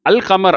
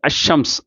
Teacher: இந்த அல் கமருங்கிறதுல லாம் வெளிப்படுது, இந்த அஷம்ஸுங்கிறதுல லாம் வெளிப்படலை, நேராக ஷீன் வெளிப்படுது.